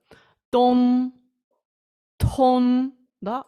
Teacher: тут ми маємо максимально оглушений д